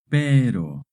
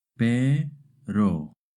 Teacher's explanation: when the R is between two vowels, it makes a short tap R sound